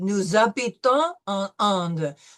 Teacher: The s becomes a z.